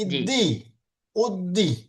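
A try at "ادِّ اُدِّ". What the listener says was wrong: একটু দরটা আর একটু মোটা হবে। আদি, ইদি, উদ্দি।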